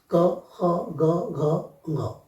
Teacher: क वर्ग का उच्चारण कंठ से है